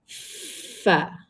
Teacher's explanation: Huruf fa bibir bawah duduk dekat bawah gigi atas. Bibir bawah duduk bawah gigi atas.